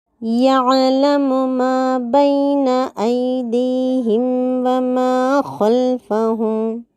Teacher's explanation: خلفہم میں خا کو گول کر کے پڑھنا ہے۔